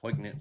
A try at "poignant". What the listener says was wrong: don't pronounce the G, man.